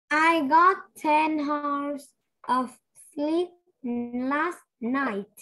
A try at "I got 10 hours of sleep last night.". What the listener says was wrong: Okay, again, this one, you don't say hours. The letter H ở đây con nhìn nè.